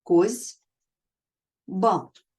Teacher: дзвінкий звук Б впливає на попередній глухий с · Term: регресивна асиміляція